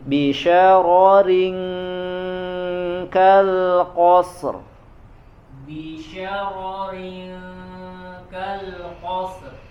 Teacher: Ro-nya yang pertama tebal, yang kedua tipis. Bisyaroring, kemudian ikhfanya sempurna ya.